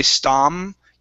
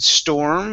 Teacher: you didn't say stom you said storm and you curved the tongue into it